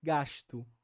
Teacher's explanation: essa palatalização do S acontece categoricamente ou seja de forma mais regular e mais consistente